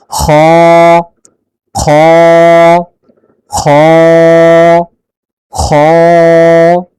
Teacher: কণ্ঠনালীর শেষ হতে খ উচ্চারিত হয়